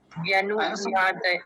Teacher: व्यनु नहीं बोलेंगे? हाँ, व्यनु जल्दी से बोलेंगे, छोटे ऊ की मात्रा है ना, जी, लंबा नहीं खींचना।